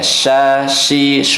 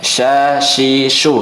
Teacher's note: Huruf sya itu dia tidak nempel lidahnya ke langit-langit, tapi sejajar saja dengan gigi seri bawah, cuman dia mengarah saja. Sya, shi, shu, mengarah ke langit-langit.